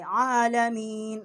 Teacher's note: عین کے اوپر کھڑی زبر ہے، ایک الف جتنا، یہاں ہم نے آواز بلند کی ہے۔ عالمین، اور یہاں ہم نے وقف کیا ہے۔